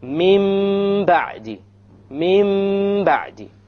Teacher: We change the Nun into a Meme, and we perform a Ghunna on it.